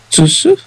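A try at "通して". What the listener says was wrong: No, it's to. Toshite.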